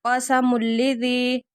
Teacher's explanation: تنوین کے بعد لام آ رہا ہے، غنے کے بغیر ادغام ہو رہا ہے